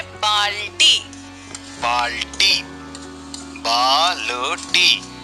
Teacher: यहाँ पर हम बा को तेज आवाज में बोल रहे हैं। बा के बाद ल को बहुत कम आवाज में बोल रहे हैं और फिर टी के लिए आवाज फिर तेज हो जाती है। इस कारण बाल्टी शब्द में बा पूरा, ल आधा और फिर पूरे ट वर्ण का प्रयोग किया गया है।